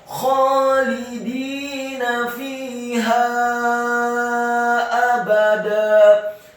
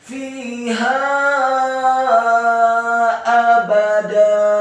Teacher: Kata fiha, fa-nya dibaca kasrah dua harokat karena setelahnya ada ya sukun. Kemudian ha-nya dibaca tafkhim tebal fathah 4 sampai 6 harokat karena setelahnya ada alif, dan di atas harokat fathah huruf ha yang tafkhim ada harokat bendera.